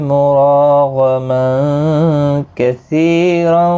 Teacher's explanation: مراغما غین مستعلیہ ہے، پر پڑھا جائے گا۔ تنوین کے بعد حروف اکفا کا کاف اخفا حقیقی ہوگا۔ سی یا مدہ ہے، ایک الف کی مقدار کے برابر کھینچیں گے۔